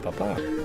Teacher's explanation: papa is with the emphasis on the second A, the second syllable